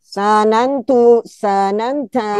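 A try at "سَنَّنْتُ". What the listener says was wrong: Kenapa sanya panjang? tidak ada alif. Mohon maaf, wazan 3 ini ada tasdid, sehingga ditekan, bukan dipanjangkan. Kan asalnya sanana, lalu tambahkan tasdid jadi sanana gitu kan. Sanana. tambahkan tu jadi sanantu. Sanantu. Nunya ada tiga.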